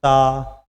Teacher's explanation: अगर हमारे दांत ना हो ता नहीं बोल, जीभ ना हो तो ता नहीं बोल। दांत और जीभ की जरूरत पड़ रही है ता बोलने को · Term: स्पर्श